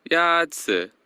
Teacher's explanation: The first tone is a high, level tone.